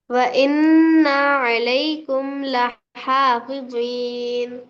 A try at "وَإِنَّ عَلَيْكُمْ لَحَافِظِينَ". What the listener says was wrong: نہ بول کے نہیں کھینچنا ماں. وَإِنَّ عَلَيْكُمْ لَحَافِظِينَ. وَإِنَّ عَلَيْكُمْ لَحَافِظِينَ.